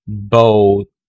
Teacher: Next is this vowel sound, as in boat, boat. Rounded lang siya at the end of the vowel sound.